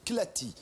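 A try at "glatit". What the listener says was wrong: Glati, pas Clati. avec un G comme Gad.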